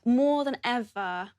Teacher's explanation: As you can hear, uses a long /ɔː/ vowel for the word 'more'.